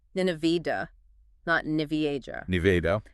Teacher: stress is on the second syllable with a short A sound, like an apple.